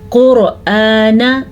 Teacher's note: यहाँ पे भी हमने रॉ को भी पुर पढ़ा है और क़ाफ को भी पुर पढ़ा है